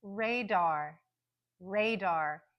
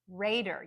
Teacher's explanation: You hear the first syllable is the stronger one, that's the primary stress, but then we hear the very clear dar, radar. So that second syllable has a secondary stress.